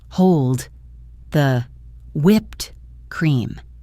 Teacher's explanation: Look at the word hold. To make it flow into the next word, we don't release a hard D sound.